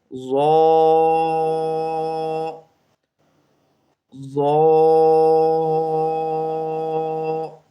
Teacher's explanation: یہ جو ہے ضا، یہ آپ نے موٹا کر کے پڑھنا ہے کیونکہ یہ حروف مستعلیہ میں سے ہے ضا، اس لیے آپ نے اسے موٹا پڑھنا ہے ضا ضا۔